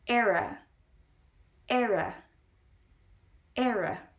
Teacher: the e in the beginning is not very stressed the r in the middle is stressed and then the a is pronounced at the end